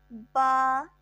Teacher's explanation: با بند ہونٹوں کے گیلے حصے سے ادا ہونے والا حرف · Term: حروف شفویہ